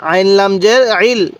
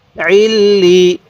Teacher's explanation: লামটা দুইবার উচ্চারণ হবে